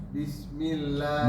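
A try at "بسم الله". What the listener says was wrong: Bisnya panjangin desisnya.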